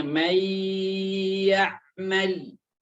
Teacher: Nunnya di sini sudah hilang karena saya masukkan ke huruf ya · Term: idgham bi gunnah